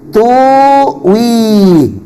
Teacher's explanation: hamzah sukunnya tadi diibdalkan menjadi wawu sukun